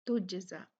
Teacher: जीम जो है यहाँ पर कलकला होगा तुजज़ा के